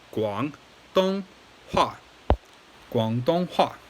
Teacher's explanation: third tone, first tone, fourth tone